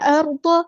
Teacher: را کو یہاں ہلانا نہیں ہے